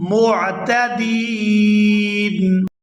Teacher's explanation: دال کو یا ساکن اور نون ساکن کے ساتھ ملا کر ادا کریں گے۔ دال یا نون زیر دین، معتدین۔